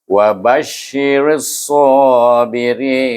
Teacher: Kita wakafkan dekat kalimah sabirin dan kita gunakan nun ini disukunkan dan kita guna hukum ma'ril sukun, baca dengan panjang 2, 4 atau 6 harakah.